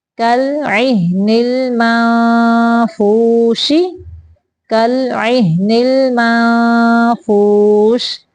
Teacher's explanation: یہاں پہ بھی نون کے اوپر اخفاء ہو رہا ہے. نون کی آواز کو ہم ناک سے چھپا کے نکالیں گے اور نکالتے ہوئے ہم فا کی شیپ دیں گے